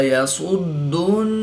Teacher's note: صاد حروف مستعلیہ میں سے ہے تو اس کو پر یعنی موٹا پڑھیں گے۔ دال حروف قلقلہ میں سے ہے اور جب حروف قلقلہ مشدد ہوں تو ان میں قلقلہ خوب جماؤ کے ساتھ کریں گے، اس کو قلقلہ کبرا بھی کہتے ہیں۔ نون مشدد میں ہمیشہ غنہ ہوتا ہے تو یہاں پر غنہ آنی کر کے پڑھیں گے۔